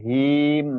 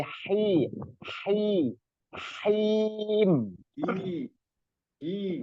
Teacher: napas yang keluar itu lebih banyak dan lebih ditekan lagi